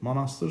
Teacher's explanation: monastır sözündə o A kimi tələffüz olunur. Səslə hərf tərkibi fərqlənir, amma A qanuna tabedir.